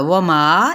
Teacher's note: वमा यहाँ पे 4 हकार लंबा करेंगे